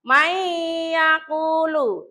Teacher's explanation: bacanya nunnya itu lebur, jadi langsung masuk ke ya. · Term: idgham bi gunah